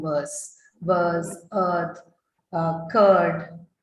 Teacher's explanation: the first vowel sound that you see in the word verse is actually an elongated one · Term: long vowel